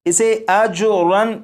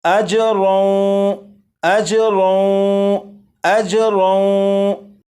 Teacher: یہ جو لفظ ہے اجرن، اسے اجرن نہیں پڑھیں گے بلکہ تنوین کو واو میں ادغام کریں گے اور اس طرح پڑھا جائے گا اجرون، اجرون، اجرون، یہاں سے